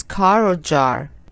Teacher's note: In American English, people pronounce the R sound fully, like in words such as car or jar.